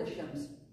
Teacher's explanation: Because you don't pronounce the lam. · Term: lam ash-Shamsiyya